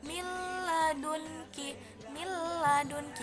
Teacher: nun mati bertemu dengan lee contohnya Mil ladunka Mil ladunka yang tidak ada berdengung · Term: idgham bilagunnah